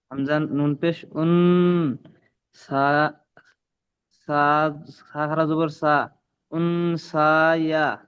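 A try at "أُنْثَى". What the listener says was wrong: ইয়াটা বাদ, ইয়াটা বাদ। ইয়া কি কোনো হারাকাত আছে? ইয়া পড়তে হবে না এখানে, বুঝতে পেরেছেন? ইয়ার উপরে কোনো কিছুরই পড়তে হবে না।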